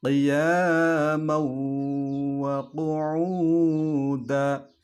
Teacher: Jadi idgham bi gunnah, ya, dimasukkan ke huruf waw, tanwinnya itu, dan disertai dengan dengung, bi gunnah.